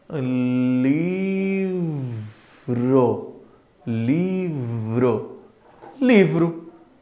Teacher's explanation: você está colocando os dentes superiores no lábio inferior, ó, você está começando a fazer o som do V